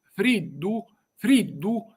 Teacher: si pronunzia con una di alveolare, come in italiano